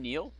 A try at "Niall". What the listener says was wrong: it looks like neil but it's pronounced nile like the river